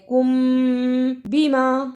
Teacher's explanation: اخفاء شفوی، ادا کرنے کا طریقہ میم ساکن کو کچھ دیر منہ میں رکھنا ہے